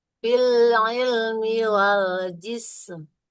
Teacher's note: Huruf mimnya dia harus kebaca ya, enggak boleh hilang.